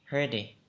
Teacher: Khi âm T mà nó đứng ở giữa hai cái phụ âm thì T trở thành D.